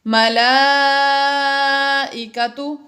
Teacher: مد متصل ہوا، اس کو بھی 2، 2.5 یا 4 الف تک کھینچ کر پڑھا گیا